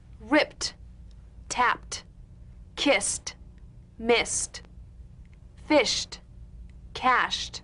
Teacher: Let's look at some ED endings. ED endings that are really pronounced as T. First, an unvoiced group.